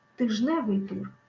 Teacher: Ми кажемо тижневий тур, хоча іменник тиждень має в собі звук д, але в прикметнику цього звука вже немає. Цікаво, куди ж зникла літера Д? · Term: Спрощення приголосних